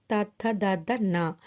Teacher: దంత్యములు అంటే దంతాల నుండి పుట్టేవి. ఇవి తావర్గం.